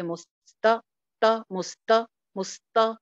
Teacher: تا کے اوپر سانس بھی چلتی ہے. جن لیٹرز کے اوپر سانس چلے نا ان میں پستی آتی ہے، ان کی آواز اتنی اونچی نہیں ہوتی ہے، تو لہٰذا آواز کو تھوڑا دھیما رکھیے.